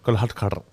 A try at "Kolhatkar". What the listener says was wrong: Kolhatkar. There's no roll with a R. No.